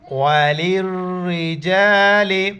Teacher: لام کو را کے ساتھ ملائیں گے، اس لام کو نہیں پڑھیں گے